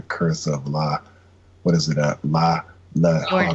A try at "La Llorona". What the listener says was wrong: Llorona. You pronounce it like a Y, Llorona.